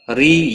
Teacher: یا مدہ ہے، ایک الف کے برابر کھینچ کر پڑھیں گے۔